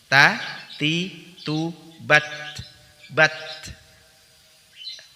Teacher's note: Bunyi ditahan kemudian baru nafas atau udara dialirkan. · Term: huruf ta